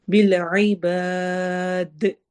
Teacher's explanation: عین حروف حلقی میں سے، اور با کو لمبا کرتے ہوئے ہم دال پہ وقف کریں گے